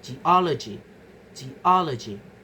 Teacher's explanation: So the stress move to the syllable immediately before the suffix y. The stress falls on O, the syllable before Y. · The stress falls on o, the syllable before y, following the stress attracting pattern. We move to the stress shifting suffixes. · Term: derived stress